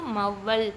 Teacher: அவகாரம் சொல்லுக்கு முதலில் வரும்போது தன் மாத்திரையிலிருந்து குறுகி ஒலிக்கும் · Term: அவகார குறுக்கம்